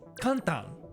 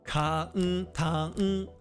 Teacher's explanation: since every kana is one unit of length, it's actually pronounced 'ka-n-ta-n', four units. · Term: mora-timing